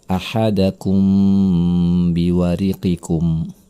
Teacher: Ini adalah ikhfa syafawi. Maka cara membacanya adalah dengan mendengungkannya dengan sengau dari dalam hidung selama 2 harokat.